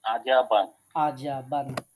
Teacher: জিহ্বার মাঝখান থেকে তালুর সাথে লাগিয়ে জিম